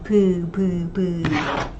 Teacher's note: We're not yet aspirating it. No harsh sound yet. It's very soft.